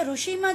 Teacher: રૂ લખાય છે જે મૂળ સંસ્કૃત પરંપરામાં અલગથી સ્વર હતો પણ ગુજરાતી પરંપરામાં આપણે ર વત્તા ઉનો જ ઉચ્ચાર કરીએ છીએ